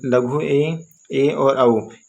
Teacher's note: की बात करें तो मुख आधा खुलता है भाई इसमें यानी इन स्वरों का उच्चारण करने में भैया हमारा मुख कैसा है तो आधा खुलेगा